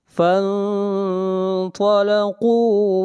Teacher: اخفاء کو موٹا کریں گے، یعنی اخفاء کے اندر تفخیم ہوگی، اس لیے کہ یہاں پر نون ساکن کے بعد اگلا حرف حروف مستعلیہ میں سے ہے۔